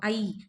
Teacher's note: நம்ம முடிக்கும் போது ஈன்னு முடிக்கிறோமா அப்போ ஈ தான் இதோட இணைய எழுத்து